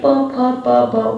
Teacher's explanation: दोनों होठ के बीच में बोला जा रहा है ना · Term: ओष्ठ